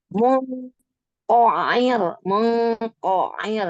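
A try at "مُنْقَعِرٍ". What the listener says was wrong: Ko, jangan maju. Mungkoin. Lagi coba di huruf kof aja. Ko, ko, ko, Rahang dibuka. Ko,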